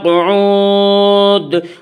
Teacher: قعود پر جب ہم وقف کریں گے تو دال ساکن ہو جائے گا، اور جب دال ساکن ہوگا تو دال میں قلقلہ ہوگا۔